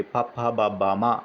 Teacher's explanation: ఓష్ట్యాలంటే పెదవులతో పలికేవి. పప్ప, బబ్బ, మా అవి ఓష్యాలు.